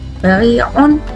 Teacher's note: ri-nya itu dibaca panjang 2 harokat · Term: mat tabi'i